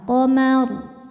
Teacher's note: Karena sebelum ro yang disukunkan ada huruf berharakat fathah, maka rnya tebal. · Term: tafkhim